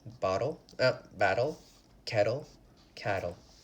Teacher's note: All of these words, there's a lot of T's, we pronounce them with a D.